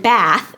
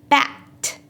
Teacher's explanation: voiceless th does not exist in Vietnamese. So the closest approximation of that word for a native Vietnamese speaker is the word bat.